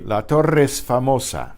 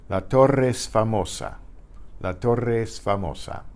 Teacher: Notice how the E and Torre and the E and S become one.